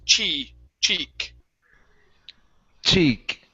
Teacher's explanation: it's an e sound a long e okay just like a spanish i or an e